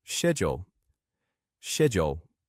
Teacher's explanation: The American pronunciation is usually with a sk sound, like schedule, schedule. But the British pronunciation often uses a sh sound, like schedule, schedule.